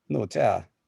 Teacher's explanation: we have a word with 2 falling tones